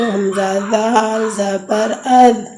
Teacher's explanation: زبان کی نوک جب اوپر کے اگلے دونوں دانتوں کی جڑ کی طرف والے حصے سے لگے تو اس سے ذال ادا ہوگی